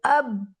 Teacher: the ending point of the sound in this specific shape like اب پہ میرا sound اینڈ کر رہا ہے جب میں اپنے اوپر نیچے کے لپس کو آپس میں جوائن کر رہی ہوں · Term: با کا آرٹیکولیشن پوائنٹ